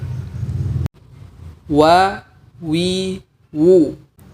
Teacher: huruf waw tidak perlu sampai merapatkan antara bibir atas dan bibir bawah